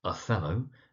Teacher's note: emphasis on the second syllable